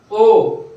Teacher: गळ्यातून आवाज आला, ओठ गोल झाले